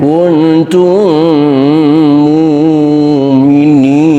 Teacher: Mim mati ketemu mim, idgham mutamatsilin